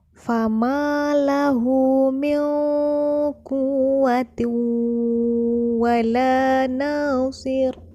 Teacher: pada kata la dan na terdapat mad asli jika kita baca, yaitu dengan dipanjangkan 2 harkat